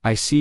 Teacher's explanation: your tone drops slightly to show calmness